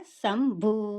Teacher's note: భూ అంటే బా మహాప్రాణ అక్షరము. బాకు కొమ్ము దీర్ఘం ఉంది. గాలిని బయటికి వదులుతూ భూ అనేసని పలకాలి.